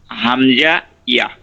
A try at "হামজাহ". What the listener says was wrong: হামজাহ, এখান থেকে হামজাহ। হামজাহ। জাহ মানে শেষে আবার হা আছে, ছেড়ে দিতে হবে। হাম জাহ, জাহা যাবত জাহ, হাম জাহ। না, জাহ এটা হচ্ছে টান। হাম জাহা জবর জাহ, জাহ জাহ, দ্রুত। হাম জাহ। হা বলা লাগবে না,